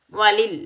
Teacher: वलिल लाम को लाम साकिन के साथ मिलाएंगे। वलिल काफ के ऊपर खड़ा जबर एक अलिफ की मिकदार में खींच कर अदा करेंगे।